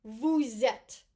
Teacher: But if we have this consonant and it's followed by a vowel, this consonant, specifically the S, and it's followed by this vowel, we will make a liaison and we will pronounce it as a Z.